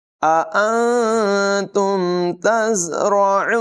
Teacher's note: زا میں سیٹی کی آواز نمایاں کریں گے، را کو پر پڑھیں گے، عین کی آواز نمایاں ہوگی.